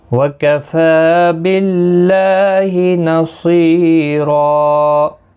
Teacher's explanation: باللہ، اللہ کا لام اس زیر کی وجہ سے باریک پڑھا جائے گا، اس کے اوپر کھڑی زبر بھی ہے، ایک الف کی مقدار کے برابر کھینچ کر بھی پڑھیں گے۔ نصیرا، صاد حروف مستعلیہ ہے، پر پڑھا جائے گا، یا مدہ بھی ہے، ایک الف کی مقدار کے برابر کھینچ کر پڑھیں گے